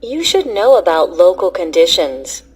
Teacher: Notice how some words are linked by a w sound and other words are linked by a y sound.